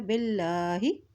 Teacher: युमिनु मिनकुम युमिनु बिल्लाही, अब यहाँ देखिए अल्लाह के नाम से पहले ज़ेर आ किया तो अल्लाह का नाम बारीक अदा किया जाएगा